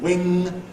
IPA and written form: wɪŋ (wing)